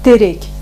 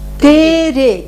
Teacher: Как бы идет твердое т с приступом